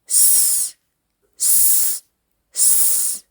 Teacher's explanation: Your teeth are close together making a hissing sound.